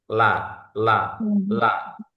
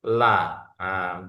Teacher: Ujung tepi lidah. Baik kiri maupun kanan yang nempel di gusi gigi bagian atas. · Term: huruf lam